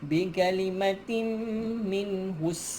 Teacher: tutup mulut rapat di sini idgham ma'al gunnah